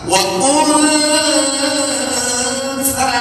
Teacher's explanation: Maka bunyikan nun, tapi makhrajnya sa.